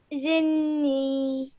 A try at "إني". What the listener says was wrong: This is an alif, so إني